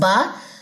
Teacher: تری جس کو آپ کہہ لیں کہ ویٹ, گیلی جگہ جو ہے ہونٹوں کی, جہاں پہ تھوڑی سی کہہ لیں کہ تھوک تھوک سا رہتا ہے, ٹھیک ہے, وہاں سے. با دونوں ہونٹوں کے تری والے حصے سے ہوتا ہے